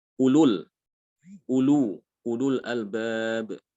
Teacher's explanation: Jadi wawu itu dia tidak diucapkan meskipun tertulis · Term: dibaca pendek